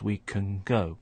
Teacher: the sound at the end of the word can is starting to resemble the sound of the beginning of go